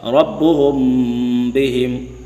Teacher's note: میم ساکن کے بعد اگر با آ جائے تو اخفاء شفوی ہوگا، یعنی ہونٹوں کے ساتھ غنہ ادا ہوگا